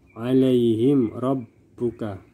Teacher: mim sukun bertemu dengan huruf ro maka dibaca jelas tanpa dengung ilaihim Robbuka maka disini berlaku bacaan izhar syafawi jelas tanpa dengung · Mim sukun bertemu semua huruf selain huruf ba dan mim, dan di sini mim sukun bertemu dengan huruf ro, maka dibaca jelas tanpa dengung.